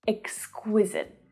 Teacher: a lot of these adjectives that we've been talking about today have this k-w consonant cluster.